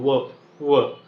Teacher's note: नुसता ओठा ओठांमध्ये सुद्धा व होतो